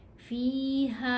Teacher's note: अब हा के ऊपर मद है तो हमने इस हा को 3 अलिफ जितना लंबा पढ़ना है